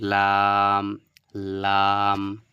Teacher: উপরের দাঁতের যে মাড়িগুলো রয়েছে সেই মাড়ির সঙ্গে টাচ করে এই আওয়াজটা বের হবে